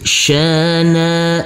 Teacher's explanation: huruf alif kita baca panjang dengan panjang dua harakat karena di atasnya ada huruf alif kecil yang berdiri tegak lurus